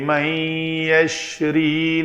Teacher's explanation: نون ساکن کے بعد یا ہے تو یرملون میں سے تو یہاں پہ ایک شد ہوگی، نون کا یا کے اندر ادغام ہوگا